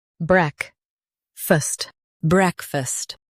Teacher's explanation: Emphasize break and soften fast.